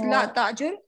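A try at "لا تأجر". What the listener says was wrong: It should be like with a hamza, right?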